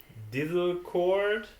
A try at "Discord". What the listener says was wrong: You said Dizzlecord instead of Discord.